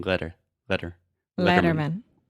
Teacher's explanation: So that quick flap T sound, very similar to the Portuguese R sound, like para piri puru